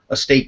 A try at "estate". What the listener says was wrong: It almost sounds like you're saying state, so we're just saying estate. Yeah, in the video, it just comes over and almost sound like state.